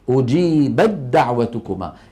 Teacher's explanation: تحولت إلى دال، أجيبت تحولت إلى أجيبد، ثم أدغمت الدال في الدال فصار النطق بإيه؟ بدال مشددة.